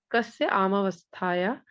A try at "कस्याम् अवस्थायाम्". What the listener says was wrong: आमावस्था नहीं है, कस्याम कस्याम अवस्थायाम इत्याह, ऐसे है।